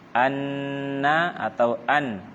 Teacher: mendapati suara Mbah keluar dari kedua bibir bacalah Ana atau an kita akan mendapati suara Nun keluar dari ujung lidah menempel pada bagian gusi atas